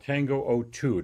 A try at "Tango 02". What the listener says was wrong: Well, in English, yes, but we pronounce it in Spanish, man. It's Tango 02.